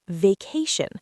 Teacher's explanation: It's vacation, not vacación. Stress on the second syllable, vacation.